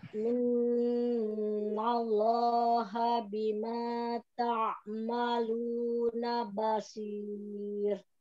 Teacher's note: Nunnya tahan, lafad Allahnya dua harokat.